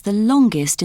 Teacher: We say the ending est with a schwa sound, ust.